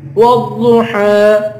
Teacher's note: کر واد کو پر پڑھیں گے، حا پر کھڑا زبر ہے، حا کو ایک الف کی مقدار کھینچ کے پڑھیں گے